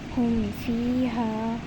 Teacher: میم اور با کے علاوہ جو حروف ہیں ان میں سے فا آ رہا ہے تو ہم نے میم کو الگ کر کے پڑھا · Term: اظہار شفوی